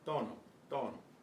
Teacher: The tongue is right behind the upper front teeth. There's no puff of air.